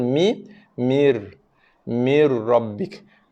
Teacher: Maksudnya kita tidak membaca lagi ataupun kita tidak menyebut, tidak melafazkan, tidak membunyikan makhraj nun mati lagi. So, mim berbaris bawah, kita terus tekankan bacaannya kepada bacaan ra bersabdu tadi.